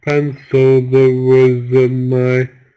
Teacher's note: we don't stress these syllables so it sounds a bit like a mumbling noise